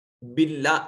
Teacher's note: باللہ اس میں جلالت کا ما قبل مقصور ہے، اس کو مرقق پڑھا جائے گا